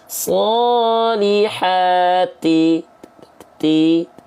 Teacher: hamsnya kadarnya hanya berupa percikan saja, bukan mengalir nafas, tapi hanya berupa percikan nafas. Ya, jadi cukup solihati, ti, namanya percikan nggak banyak-banyak, sedikit.